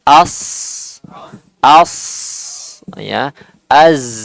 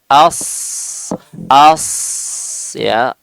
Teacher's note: As lebih mudah, tapi sekali lagi kita fokus sifatnya itu adalah memiliki suara yang tajam ya, suara yang tajam karena dia tansya'u an mururihi fi majral dayyik, yang suara yang tajam itu muncul karena melewati tempat mengalir yang sempit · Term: sofir